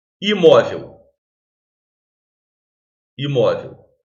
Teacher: é uma palavra com três sílabas mas a segunda que é penúltima sílaba é acentuada é uma palavra paroxítona terminada em L nós até vimos ali